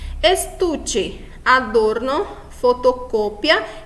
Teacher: A penúltima sílaba mais forte, então nós classificamos como llana ou grave